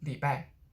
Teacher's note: what i hear when people use li bai is that it it kind of gets de-stressed